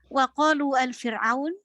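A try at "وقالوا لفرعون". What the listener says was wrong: wa qalu li fir'auna, wa qalu li fir'auna, bukan al, wa qalu li fir'auna,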